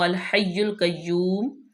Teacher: اگر یہاں پہ ہم وقف کر لیں تو ہم میم کے اوپر سے پیش ختم کر دیں گے